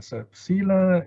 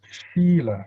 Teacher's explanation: So sila in Sanskrit is shila, the S has got a sh sound.